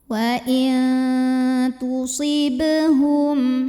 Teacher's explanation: Berikutnya ada qalqalah sugro. Karena ada huruf qalqalah yang sukunnya sukun asli dan ada di tengah bacaan, maka dibaca memantul dengan pantulan yang kecil.